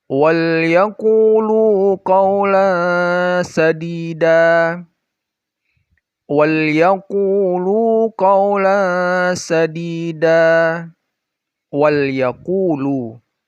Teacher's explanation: Wal yaqulu, setelah lam sukun itu ada ya, maka ya-nya lamnya dibaca jelas, ya-nya juga dibaca jelas, izhar dia.